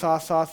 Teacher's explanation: جب آپ اس کو تھوڑی سی زبان کو، نوک کو ہلکی سی باہر نکال دیں گے تو وہ سا سا سا ہو جائے گا